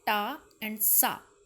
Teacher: the sound of ta and sa are both voiceless alveolars